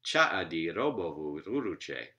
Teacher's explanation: when you get to nine syllables you get again a third series of three syllables with stress in the initial one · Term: ternary stress